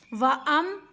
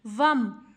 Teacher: بالکل بھی خالی ہے، اس کے اوپر کوئی قسم کی حرکت نہیں ہے۔ واو کو میم کے ساتھ ملانا ہے، الف کے ساتھ نہیں ملانا۔